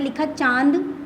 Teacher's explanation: तो हम लोग जब भी बोलते हैं इसमें ऐसा लगता है जैसे कि नाक से हवा निकल रही है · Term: चंद्र बिंदु